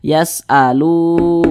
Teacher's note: Mad tabi'i panjangnya 2 harokat. 2 harokat itu untuk lebih mempermudah kita dalam belajar kira-kira 2 ketukan.